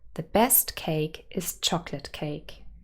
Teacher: is chocolate cake so chocolate is the real last content word the nucleus is on chocolate not on cake · nucleus is on chocolate not on cake and then of course chocolate has two syllables and the main stress would be on the first